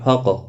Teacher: قاف ساکن پر قلقلہ ہوگا، موٹا بھی پڑا جائے گا، حروف مستعلیہ میں سے ہے، را زبر کی وجہ سے پر پڑا جائے گا۔